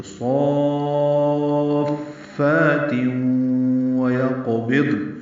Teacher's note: واو ہونٹوں کی نہ تمام گلائی سے ادا ہوگی، قاف ساکن پہ قلقلہ ہوگا. ویقبض ضاد ساکن ہے، نون ساکن ہے، 2 ساکنیں اکٹھے ہو گئے تو ضاد ساکن پہ اظہار ہوگا، نون ساکن پہ بھی اظہار ہوگا. · مد لازم کلمی مثقل ہے، صاد کو لمبا کرنا ہے، 6 حرکات لمبا کریں گے، فا سے ملائیں گے، فا کو 2 حرکات لمبا کریں گے اور تنوین کے بعد واو آنے کی وجہ سے تم میں ادغام کریں گے.